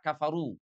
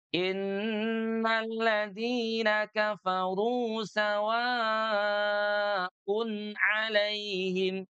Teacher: al-qasr itu adalah bacaan panjang dua harakat seperti pada kata kafaru. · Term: qasar